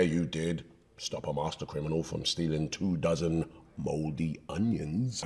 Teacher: his voice has this magnetic feel to it thanks to the great chest resonance. In my experience, this resonance is achieved not by strong force, but by vibrating your vocal cord gently.